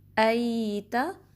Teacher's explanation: یا لین ہے یہ کیونکہ اس سے پہلے زبر آئی ہے، تو اس میں آپ نے اس کو 1.5 کاؤنٹ سٹریچ کرنا ہے، پراپرلی جو کو نیچے کرنا ہے۔